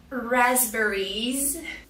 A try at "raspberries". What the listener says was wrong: First, the stress. We cannot put any stress on the third syllable. There's only one stress, it's on the first syllable. The second syllable is not it's air. Air like hair and chair.